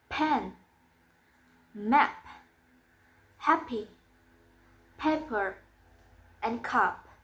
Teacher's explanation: And it's voiceless. The place of articulation is labial and the manner of articulation is plosive.